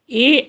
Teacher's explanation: ए दई तो कंठ तालु, ए ऐ ये 2 वर्ण हैं जिनका कंठ और तालु दोनों का स्पर्श होता है